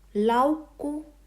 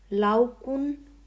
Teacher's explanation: This double k changes to single k, that is strong to weak form.